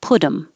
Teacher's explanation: Put'em, the T changes to a D, and you don't have to say the H. So this is H deletion.